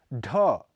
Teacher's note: अल्प प्राण घोष ध्वनि है इसका उच्चारण स्थान मूर्धा है ढ यह महाप्राण घोष है इसका उच्चारण स्थान मूर्धा है